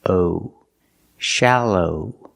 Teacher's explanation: the second syllable is the long o like no and go